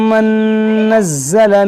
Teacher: یہاں نون ساکن کے بعد نون ہے، یہاں پر ادغام ہوگا